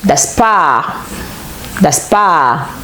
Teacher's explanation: le R n'est pas prononcé. Oui, il se transforme en A, prononcé brièvement.